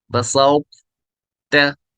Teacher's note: मतलब ये है कि इसमें तौ की भी थोड़ी भी सिफात आएंगी और ता की भी आएंगी। जब हम पढ़ेंगे तो तौ भी थोड़ा पुर भी होगा, बारीक भी होगा, लास्ट में बारीक होगा, स्टार्ट में पुर होगा। हम पढ़ेंगे बसाओ ता, लास्ट में मैंने ता पढ़ा, बसाओ, इसमें पुर पढ़ा, बसाओ ता, ऐसे पढ़ा जाएगा, बसाओ ता।